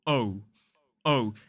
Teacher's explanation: One signature sound of a modern British RP accent is the diphthong O.